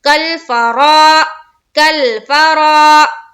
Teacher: را کو پر کرتے ہوئے ہم الف مدہ کریں گے